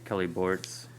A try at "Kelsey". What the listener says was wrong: I just want to say it's Kelsey. You said Kelly, I think.